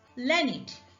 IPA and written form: ˈləːnɪd (learned)